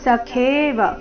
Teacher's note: ಸಖೇವ ಖೇ ದೀರ್ಘ ಮಹಾಪ್ರಾಣ